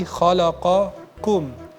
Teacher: kan ada qaf dan kaf. Dan makhrajnya berdekatan yang harus diperhatikan. Jangan sampai terjadi penukaran gitu ya.